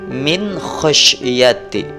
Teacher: setelah nun mati bertemu huruf kha, maka nun mati ini harus jelas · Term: hukum bacaan idhar